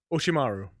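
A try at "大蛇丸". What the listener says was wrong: You're missing an O there. An O after the R.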